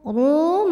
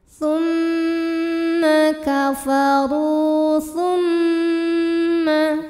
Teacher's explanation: Cara membacanya dipanjangkan ra-nya 2 harokat. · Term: mad tabi'i zahiri